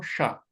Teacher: आपको दंत यानी दांत के पीछे से स्टार्ट करना है